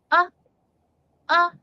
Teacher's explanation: short u sound is uh uh it's the placing of your mouth it's not very rounded it's controlled